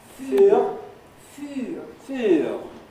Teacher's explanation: But it's got U, it's got a rounded vowel, rather like the one written with the letter Y in this slide.